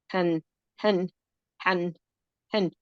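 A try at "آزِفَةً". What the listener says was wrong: This is a ta marbuta. Remember, as long as we're going to pronounce the vowel, it's going to be a ta. why are you treating it like tanween? It's just a kasra.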